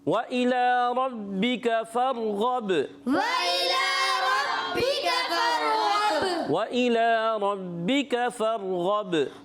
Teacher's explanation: واو کی ادائیگی ہونٹوں کی گولائی سے، حمزہ کو خوب واضح کریں گے، کھڑی حرکات ایک الف کھینچ کر ادا کریں گے، را کو پر رکھنا ہے، با مشدد ہے اس لیے تھوڑا رک کر ادا کریں گے۔